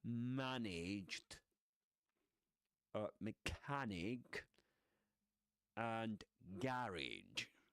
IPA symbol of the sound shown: æ